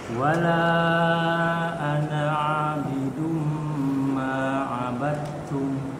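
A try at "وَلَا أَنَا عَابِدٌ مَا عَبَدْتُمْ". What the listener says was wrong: B-nya jelasin. Ma'a. Ya, kita latihan baca huruf ain, ikhwah. Jangan aneh, jangan masuk hidung. Mereka masuk hidung ini.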